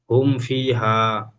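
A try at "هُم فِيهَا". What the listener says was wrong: হুম ফিটা টান ছেড়ে যাচ্ছে, টান দিয়ে পড়তে হবে ইয়া মাদ্দা। হুম ফি হা।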